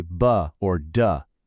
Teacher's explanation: So, you know how some consonants make your vocal cords vibrate? Put your hand on your throat and say B or duh. You feel that little buzz? Those are called voiced consonants.